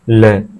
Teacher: जिन ध्वनियों के उच्चारण में जिह्वा का अग्रभाग वस्त्र का स्पर्श करती है तथा श्वास जिह्वा के दोनों पार्श्वों से निकलती है, उन्हें पार्श्विक व्यंजन कहा जाता है